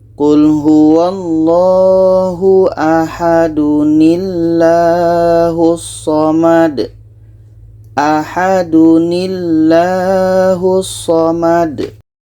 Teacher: Cara baca nun wiqayah, tanwin ini kita buang satu barisnya, kita ganti dengan nun yang berbaris di bawah. Kita baca Qul huwallahu ahadunillahus samad.